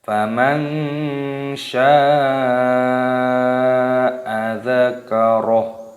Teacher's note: terdapat mad wajib mutasil, wajib dipanjangkan 6 harokat ataupun 5 harokat.